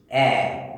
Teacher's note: এ উচ্চারণ করলে দেখো জিভ কিন্তু সামনে পড়ে আছে, এ জিভ সামনে পড়ে আছে, জিভ আর টানা হচ্ছে না। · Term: সম্মুখ স্বর